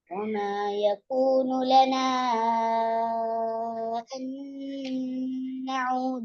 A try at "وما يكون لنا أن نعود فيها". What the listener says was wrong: ஸ்டார்ட்ல வர வாவோட உச்சரிப்பை மறைக்காம ஓதணும், தெளிவுபடுத்தி ஓதணும், தெளிவாக ஓதணும் என்று சொன்ன விஷயம். அது நடக்குது இல்ல. சத்தம் போட்டு கத்தி ஓதுறதால அந்த விஷயம் திருந்தாது. எங்களோட டோன்ல எந்த சந்தர்ப்பத்திலையும் நாங்க ஞாபகம் வச்சுக்கொள்ள வேண்டிய விஷயம், வசனத்துல ஆரம்பத்துல வர சொல்லை நாங்க தெளிவுபடுத்தி ஓதுறது என்றதை ஞாபகம் வச்சுக்கொள்ளணும்.